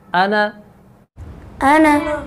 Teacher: اب یہاں پہ دیکھیں انا میں الف لکھا ہوا ہے، لیکن یہ انا ضمیر ہے، جب ہم اس کو ادا کریں گے تو الف کو نہیں پڑھیں گے۔